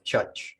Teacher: thing about the pronunciation of African uh seminal Creo is that you don't sound the RS after vowels